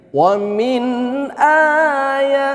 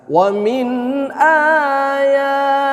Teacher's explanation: nun sukun berjumpa dengan alif ini kan ini adalah izhar. Jangan kita dengungkan ya. Harus baca jelas.